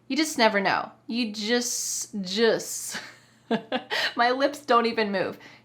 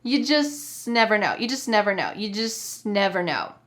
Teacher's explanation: The word just is reduced so much, is said so quickly that it's hardly there. Listen when I say it.